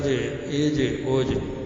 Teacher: اس میں قلقلے کی صفت اج ایج اوج، مخرج سے آواز واپس لوٹے